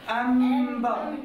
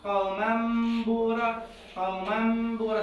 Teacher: النون الساكنه بدل ما نون احولها الى ميم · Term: الاقلاب